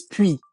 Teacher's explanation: when we're pronouncing the word on its own, the S will be silent